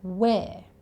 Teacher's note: in Australia, we don't tend to say the letter R at the end of words. So "where" becomes "whe(uh)" And it doesn't even sound like he says the word 'are'.